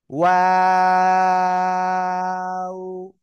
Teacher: দুই ঠোঁট গোল করিয়ে আমরা পড়বো শুরুতে, আবার মাঝখানে দুই দিকে প্রসারিত হবে, আবার শেষে এসে গোল হবে